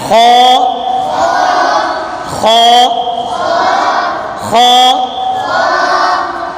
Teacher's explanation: ये हलाक के ऊपर वाले हिस्से से अदा होता है। · یہ حلق کے اوپر والے حصے سے ادا ہوتا ہے، یہ اوپر والا حصہ ہے، اس سے خو ادا ہوتا ہے۔